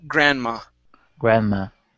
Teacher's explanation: Okay, in this word, the D is not pronounced.